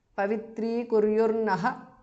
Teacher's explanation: Visarga changes to r or repha. Naha. Pavitri kuryurnaha because of sandhi.